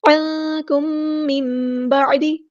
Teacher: میم ساکن کے بعد میم آیا ہے تو ادغام شفوی ہو رہا ہے، الف کے برابر رکیں گے